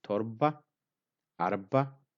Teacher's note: the ra sound is silent or kind of semi-silent. we call in Oromo-Irra-buta.